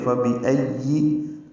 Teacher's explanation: حمزہ اقصی حلق سے ادا ہوگا · لا میں الف مدہ کے بعد حمزہ آنے کی وجہ سے مد متصل ہے، ہم اس کو 4 حرکات سے زیادہ لمبا کرتے ہیں